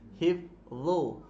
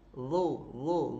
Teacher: Dia huruf dha ujung lidah dia berada di gigi. Dia berada di belakang gigi atas bawah.